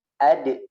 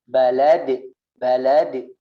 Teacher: memiliki sifat karakter ketika dalam keadaan sukun dipantulkan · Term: qalqalah